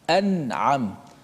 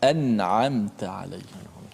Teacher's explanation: kita kena baca dengan jelaskan nun mati tanpa boleh kita memanjangkan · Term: izhar